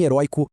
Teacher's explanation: A resposta matadora que garante o seu ponto é: a regra das oxítonas protege herói, porque a força está na última sílaba. Já em heróico, a força foi parar na penúltima sílaba